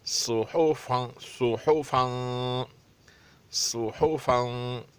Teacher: हा और फा को पतला अदा करना पड़ेगा और तनवीन भी अच्छी तरह अदा होगी